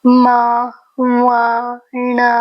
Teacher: ण यह सब हम न से नासिका से उच्चारण होते हैं नासिका से यह ध्वनि आता है इसलिए इसी को नासिका वर्ण कहा गया है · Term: नासिक्य वर्ण